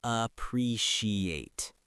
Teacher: That can be a tricky word for a lot of learners because of the soft sh sound in the middle